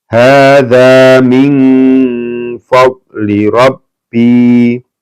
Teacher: Hadza min, ya, ini ada nun bertemu dengan fa, ikhfa ya. Maka dibaca samar-samar atau ang ing ung ya.